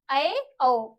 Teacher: विव्रत से थोड़ा सा कम खुला है मुंह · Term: अर्धविव्रत